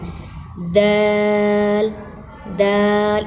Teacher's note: زبان کی نوک سامنے والے دو دانتوں کی جڑ سے لگے گی۔